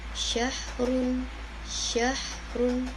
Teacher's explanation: synya itu seperti ada angin yang menyebar di mulut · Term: tafasyi